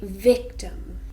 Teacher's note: 2 syllables, a noun, and we stress the first one.